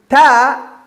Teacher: the tongue is touching the upper parts of the teeth doesn't come out that this part of the tongue the top